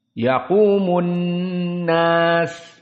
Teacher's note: nun musyaddadah idgham bi gunnah. Makhrajnya dari khaysum. Yaqumun. Di sini dari hidung.